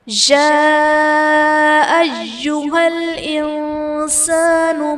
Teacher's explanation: یا ایہا الانسان ما غرک بربک الکریم، یا ایہل میں یا پر کھڑا زبر ہے جو کہ الف مدہ کے قائم مقام ہے اور حرف مدہ کے بعد حمزہ اسی کلمہ میں ہے تو یہاں پر مد متصل کا قاعدہ ہوگا۔